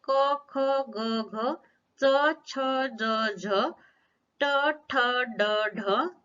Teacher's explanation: ये सभी व्यंजन मौखिक व्यंजन है। इन व्यंजनों का उच्चारण करते समय वायु मुख से बाहर निकलती है, अली जिह्वा उस समय नाक का छिद्र बंद कर देती है।